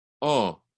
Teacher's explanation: So notice that in English, my mouth goes O. In Spanish, it never moves. It's just one sound.